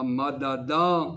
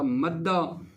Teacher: اس کی اگر آپ مثال بھی لینا چاہیں تو بہت سی جو ہے نا مثالیں آپ کی خدمت میں وہ گزری تھیں، جیسے مدہ ہے مثلا، یہ اصل میں تھا مددا، دو حرف ایک جنس کے تھے، پہلی دال کی حرکت کو ہٹا کر ساکن کر کے دوسری دال میں ادغام کر دیا تو بن گیا تھا مدہ۔